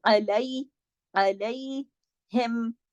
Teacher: आइन को आप गले से पढ़ेंगे, इसको अलैहिम अलिफ की तरह नहीं, इसकी प्रैक्टिस अच्छे से कीजिएगा।